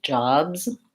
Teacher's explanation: making sure that you're open enough on that and that the S in that word says Z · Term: vowel ah